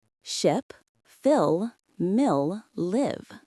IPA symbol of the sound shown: ɪ